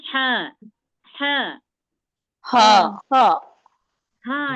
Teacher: हलकफ के दरमियानी यानी बीच के हिस्से से अदा होता है